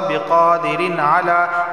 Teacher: تنوین کے بعد عین آیا ہے اور عین حروف حلقی میں سے صرف اظہار ہوگا